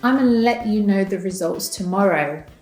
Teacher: Very often, gonna is further reduced to ana, which means that the G falls away and we only pronounce the schwa